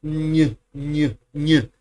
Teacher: You press the tongue as if you were going to do the N, and then you release it and you leave the air, putting your tongue in the j position. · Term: the ñ sound